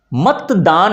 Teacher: ये जो त है ना यह ऑटोमेटिक हम द में उच्चारण कर देते हैं।